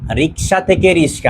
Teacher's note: রিক্সা থেকে রিস্কা আমরা এখানে দেখতেছি যে পরের শটা আগে চলে আসছে, আগে শটা পরে চলে আসছে, তার মানে জায়গা পরিবর্তন হয়েছে। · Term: ধ্বনি বিপর্যয়